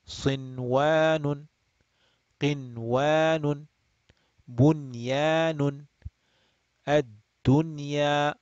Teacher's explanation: So we will pronounce the noon clearly without extending the nasal sound. Just treat it like idhar. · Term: idhar mutlaq